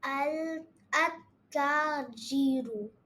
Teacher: the lam is not pronounced for the sun letters. There is another indication to identify a sun letter is it carries a shadda on it.